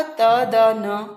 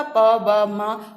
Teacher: इन वर्णों के उच्चारण में मुख से कम हवा निकलती है। ठीक है, अल्प प्राण क्या होते हैं, पहला, तीसरा और पांचवा व्यंजन वर्ण हर वर्ग का।